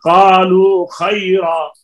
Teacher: یہ اب واو مدہ ہے، اس کے بعد خا متحرک ہے. قالو کے اوپر ٹھہر جائیں تو بھی واو مدہ پڑھی جائے گی، نہ ٹھہرے تو بھی پڑھی جائے گی